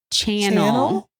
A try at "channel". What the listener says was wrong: It sounds like you're saying tunnel.